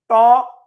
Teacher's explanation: ট উচ্চারণ করার সময় জিহ্বা পিছনের তালুতে থাকে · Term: মূর্ধা